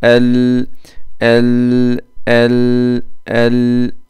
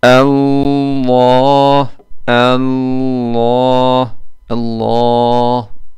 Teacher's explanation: İnce r ve ince lam harflerinde dil kökü aşağı yakın kalın lam ile kalın rde dil kökü yukarıya çıkacak